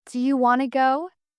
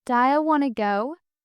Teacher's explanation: Words like do you become dia. Want becomes wanna.